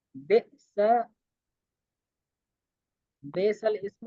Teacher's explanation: لام سے پہلے اور لام کے بعد دونوں الف نہ پڑھیں، بلکہ لام کو زیر دے کر پڑھیں